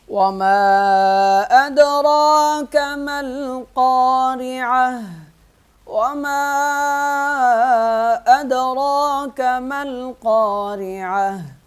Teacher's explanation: وما ادراک، وما ادراک ملقارعہ، میم کے ساتھ الف لکھا ہوا ہے، یہ دونوں الف نہیں پڑھے جائیں گے، میم لام سے مل جائے گا اور قاف کو موٹا پڑھیں گے